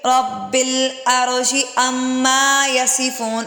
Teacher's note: اما پہ غنہ اور الف مدہ کی وجہ سے لمبا ہوگا